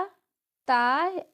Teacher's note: ता जो है दंत व्यंजन है